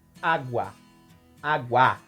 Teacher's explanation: na palavra água nós temos um ditongo crescente vai do fraco para o mais forte água água então nós somos nós temos uma semivogal + vogal